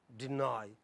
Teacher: So for onset here you have D, rhyme, there is nucleus, E, no coda in the first syllable in deny, D, nigh, in D there is no coda, but in the nigh, let us see, so you have onset, na, and you have rhyme, which has a nucleus but no coda, but nucleus is long. You have a diphthong, I, deny. So even when it does not end in a consonant, it's a heavy syllable.